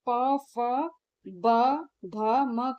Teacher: प, फ, ब, भ, म का उच्चारण करते समय दोनों होठ आपस में मिलते हैं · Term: ओष्ठ